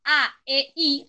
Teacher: En diferencia de esto, tenemos las vocales, que las vocales, si yo digo, por ejemplo, A, E, I, fíjense cómo el aire sale libremente y no tenemos la obstrucción del aparato fonador